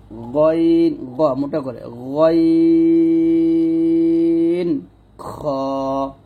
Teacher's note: তারপর 3 নং মাখরাজটা হচ্ছে হলকে শেষ হইতে উচ্চারিত হয় গইন খ। আর এই দুটো হরফ আমরা কণ্ঠনালীর শেষ থেকে মোটা করে উচ্চারণ করব।